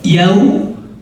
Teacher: yau monyongkan dua bibir atas dan bawah membentuk bulatan yau.